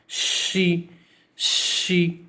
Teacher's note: हम किसी को आवाज देते हैं श तो वो जो आवाज निकलती है सीटी की वही आवाज श की है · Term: शीन